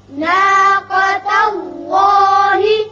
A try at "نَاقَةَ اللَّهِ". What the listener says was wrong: ناقہ نہیں پڑھیں گے، ناقا قاف کو پر پڑھتے ہیں. اسی طرح اس میں اللہ میں لام پر ہوگا کیونکہ پہلے زبر ہے. ناقة اللہ.